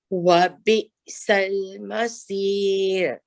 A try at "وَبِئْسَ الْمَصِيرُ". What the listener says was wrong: Okay, and remember, Auntie, that we want for the wa, make sure your lips come all the way back so that you complete the fatha.